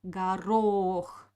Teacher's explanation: o we pronounce clearly because uh it is stressed garo but the first o will pronounce like ah because it doesn't have an accent · The second O we pronounce clearly because it is stressed